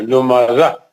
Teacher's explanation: اگر تا کو ہم رکتے ہیں تو پھر ہا سے بدل جاتا ہے. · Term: تا مربوطہ